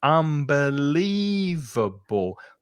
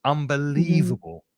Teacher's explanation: five syllables and it's the middle syllable that's stressed